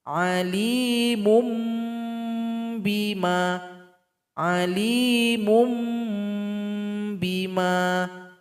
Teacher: Di sini dommatain tanwin berjumpa dengan ba mun menjadi mum. Nah, jadi seolah-olah mim kecil ini disukunkan sehingga bunyi yang terasa bukan lagi bunyi nun tapi bunyi mim. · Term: iqlab